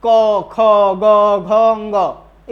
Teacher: इन सब का उच्चारण कंठ से, ये कंठ से वायु बाहर निकल रही है, अर्थात इनका उच्चारण क वर्ण वर्ग का उच्चारण स्थान क्या है, कंठ है।